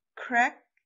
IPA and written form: kræk (crack)